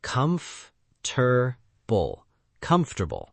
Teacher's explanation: >> Yes, many people say comfortable with four syllables, but native speakers usually say comfortable with three syllables